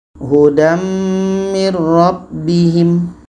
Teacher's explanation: Tanwin masuk kepada mim dan ada dengung. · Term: idgham bi gunnah